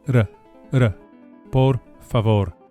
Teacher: Each of the final R's is lightly flipped with the very tip of the tongue, just behind and above the front teeth, the very same tongue placement as an English D, d, d, but with the lightest and briefest of touches to produce the flipped r, r, por favor.